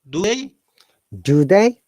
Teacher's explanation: it's a question our tone must go up